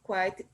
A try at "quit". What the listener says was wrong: No, it's not quite. It's quit.